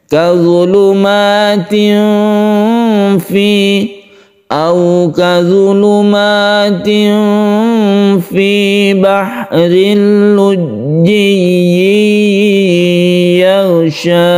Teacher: tanwin bertemu fa kita sebut dengan ikhfa hakiki, membacanya itu disamarkan. Ketika kita membaca tanwin, kita bersiap membaca fa, itu artinya ikhfa.